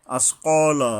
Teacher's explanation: বড় কফ অর্থাৎ হলকের গোড়া থেকে মোটা করে শক্তভাবে আদায় হবে।